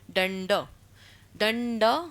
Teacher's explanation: दंड जब हम उच्चारण करेंगे तो लास्ट में क्या आ रहा है, अ उच्चारण हो रहा है